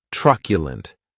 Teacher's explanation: The next adjective is truculent, and this word has 3 syllables, and the stress is on that first syllable